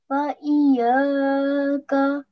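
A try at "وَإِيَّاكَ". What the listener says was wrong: Yeah, well done. Just try and remember to put more pressure on the ya.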